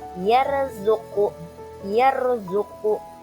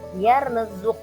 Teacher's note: sebelumnya berharakat Fathah di sini contohnya adalah yarzqu yarzuqu di sana rnya berharakat sukun atau mati tapi huruf ya sebelum huruf ro berharakat fathah maka tetap dibaca tebal atau tafhim